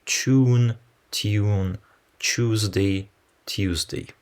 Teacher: And finally, yod claisance is another feature. The consonant cluster t-y is pronounced as an affricate chew in words like tune, tune, Tuesday, Tuesday.